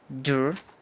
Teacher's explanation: Esa es una O abierta como dur